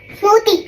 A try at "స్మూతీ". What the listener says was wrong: మూ కాదు, మూతి కాదు, స్మూతీ